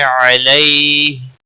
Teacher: مدہ ہے ایک الف کے برابر کھینچ کر پڑھیں گے، علیہ یا لین ہے تھوڑا نرمی کے ساتھ کھینچ کر ادا کریں گے